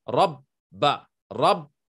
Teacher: the word rabba, you will pronounce the ba twice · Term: shadda